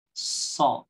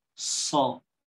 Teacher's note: beberapa ahlul Mesir membacanya dengan memberikan tasyummum bil fam. Jadi bibirnya agak maju sedikit. Jadi so. Jadi tidak maju so tidak, ya.